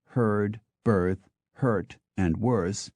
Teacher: words such as herd, birth, hurt, and worse, which all today carry an identical ER sound, which entirely incidentally is a sound that appears to be unique to English, had slightly different pronunciations up to Shakespeare's day and perhaps beyond.